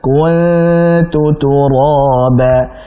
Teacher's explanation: Ya laitani kuntu, tipiskan. Kun ditarik dulu, jangan ku jadi tebal